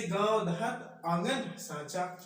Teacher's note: ऐसे स्वर का उच्चारण नाक और मुंह से होता है